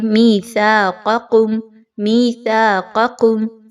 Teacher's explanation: Next آگے میثاقکم میثاقکم سا اور قاف کے مخرج پہ خاص توجہ دیجیے. سا کو نرمی کے ساتھ پڑھیے, قاف کو خوب موٹا کر کے پڑھیے